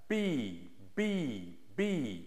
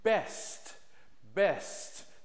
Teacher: the lips are tight together b b and I'm blowing that sound out